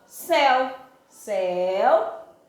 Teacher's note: Observe que o E, o som é aberto